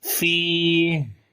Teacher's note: तो जब यहाँ पर रुकेंगे तो हम्स करेंगे, सांस जारी करेंगे इसके अंदर, और आवाज जो है वो कमजोर हो जाएगी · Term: सिफ्ते हम्स